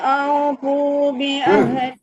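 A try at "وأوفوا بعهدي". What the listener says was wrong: Awas jangan wa'au. Bukan wa'au, enggak ada o. Au harus kedom-kedom o no.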